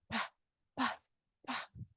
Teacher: Do we have vibration with the P sound? Pa, pa, pa. No, right? No vibration.